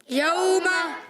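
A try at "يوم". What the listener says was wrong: اچھا بعض بچے پڑھتے ہیں بعض بچے ایسے ہوتے ہیں کھینچتے ہیں یوم ایسے نہیں یوم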